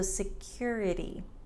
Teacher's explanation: in American English, the T often sounds like a D. So instead of security, there's no air.